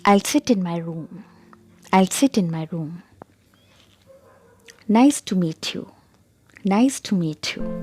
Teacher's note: Now we'll discuss about falling intonation. The pitch of the voice falls at the end of the sentence, and it is used for statements, for commands, and for WH questions.